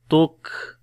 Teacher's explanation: یعنی کہ پہلے آواز بند ہوگی کاف کے اوپر شدت میں تک، اور پھر سانس جاری ہوگا تک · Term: صفت شدت اور صفت ہمس